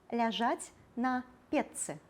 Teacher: Напрыклад, слова «печка» ляжаць на печцы. Шыпячы «ч» прыпадабняецца да свісцячага «ц» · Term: рэгрэсіўная асіміляцыя